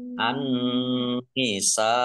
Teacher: Nun tasdid, ya dibaca gunnah atau mendengung. Biar mendengung ditahan 2 harokat. · karena bertemu dengan huruf hamzah dalam satu kata maka menjadi mat wajib muttasil, harus dibaca panjang 5 harokat